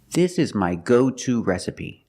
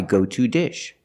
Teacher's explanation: this is an expression so we stress the word to and we pronounce it to